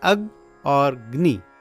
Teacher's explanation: तो यहां पर ग दो बार प्रतीत होता है। तो यह जो अतिरिक्त ग सुनाई देता है वही है यम वर्ण।